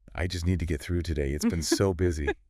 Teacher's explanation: the intonation would likely be a little lower, perhaps with a slight sigh implied.